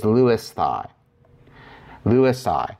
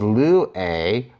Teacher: whenever a short vowel is placed in front of the sigma, the sigma tends to drop off, and the remaining vowels actually combine.